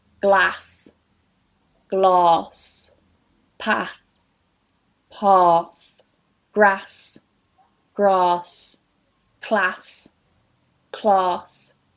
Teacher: in the north it's a very open æ sound and very short, and in the south it's a long ɑː sound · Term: trap and bath split